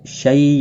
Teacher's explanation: یالین ہے تھوڑا نرمی کے ساتھ کھینچ کر ادا کریں گے